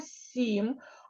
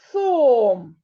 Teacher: с м'який приголосний звук а в слові сом там твердий приголосний звук с